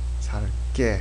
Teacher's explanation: Double G. Double G sound becomes like a strong, strong G or strong K.